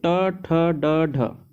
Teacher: इन सभी को मूर्धन्य वर्ण कहेंगे क्यों कहेंगे क्योंकि इनका स्थान मूर्धा है